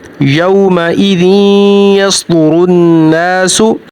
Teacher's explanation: यहाँ पर देखिए नून मुतशद्दद है, नून मुतशद्दद पर हमेशा गुन्ना होगा। रा के ऊपर पेश है, रा मोटी पड़ी जाएगी